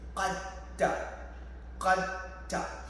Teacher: So dal will just dissolve into ta.